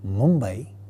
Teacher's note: because the following consonant, that is the second member of the cluster, is a labial sound Ba, therefore it is going to take a labial nasal as the first member of the cluster, and hence we have the sound Ma.